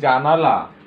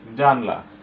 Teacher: অর্থাৎ অনেক সময় দ্রুত উচ্চারণের সময় আমরা কোনো স্বরধ্বনিকে অনেক সময় বাদ দিয়ে দ্রুত উচ্চারণ করে যাই। এই যে স্বরধ্বনি বাদ দেয়া, একটা স্বরধ্বনি কম বলা, একেই বলা হয় সম্প্রকর্ষ বা স্বরলোপ